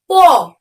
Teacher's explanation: উপরের ঠোঁট এবং নিচের ঠোঁট একত্রে কিন্তু স্পর্শ হচ্ছে তারপরে কিন্তু প এর উচ্চারণটি বেরিয়ে আসছে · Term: অষ্টধ্বনি